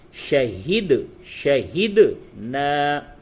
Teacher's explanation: دال میں قلقلہ ہوگا، یعنی دال کی جو آواز ہے اس میں ٹکر کی آواز آئے گی، ٹکراؤ پیدا ہوگی.